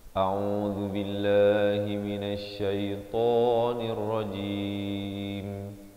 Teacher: A di pangkal kerongkong, Ain di pertengahan kerongkong dengan 2 harakat.